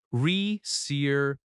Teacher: That va syllable is strong.